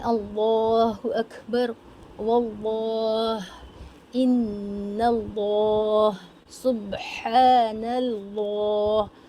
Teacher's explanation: ہر جگہ لفظ اللہ کے لام کو موٹا ہی پڑھا جائے گا، زبر ہونے کی صورت میں اور پیش ہونے کی صورت میں.